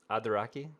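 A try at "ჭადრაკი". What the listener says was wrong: chadraki, chadraki. We have some letters which is really hard to pronounce, like ch, for example. Chadraki.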